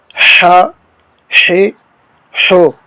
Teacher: اب یہ جو ہا ہے یہ حلق کے نیچے والے حصے سے نکلتا ہے جو سینے کی طرف ہے، یعنی جیسے سینے سے آواز نکلے، ہا ہے ہو. اور یہ جو ہا ہے یہ حلق کے درمیان والے حصے سے نکلتا ہے، ہا ہے ہو. تو اس کی جو ہے اس میں واضح فرق ہونا چاہیے.